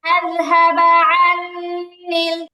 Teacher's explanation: আযহাবার হামজাটা একদম শক্ত উচ্চারণ হবে মানে নরম হবে না